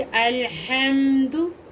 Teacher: ये हा हलक वाला, हलक के दरमियान वाले हिस्से से ये हा अदा होता है, वस्ता हलक से